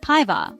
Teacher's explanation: sounds like päivää with the emphasis on the first syllable